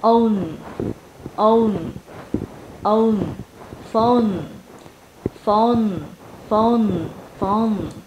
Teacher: Âm N thì đầu lưỡi mình sẽ chạm vào vòm họng phía trên. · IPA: /əʊ/